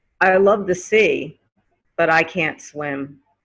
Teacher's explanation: the T in but will turn to a D sound.